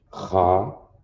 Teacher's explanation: Some of us, we do get lazy in the tongue and call this a Ka, but it's actually a Cha with a guttural sound.